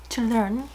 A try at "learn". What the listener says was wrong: Learn, bạn nói như kiểu từ lên ấy, xong rồi có một chữ có cái gì đấy trong đấy.